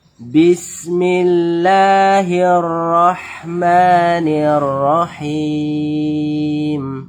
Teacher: lafaz Allah yang kita baca tipis karena huruf sebelumnya berharakat kasrah berbaris bawah